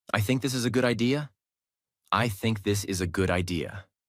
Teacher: Anytime you are giving your opinion, explaining your idea, making a decision, let your voice fall at the end of the sentence. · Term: falling tone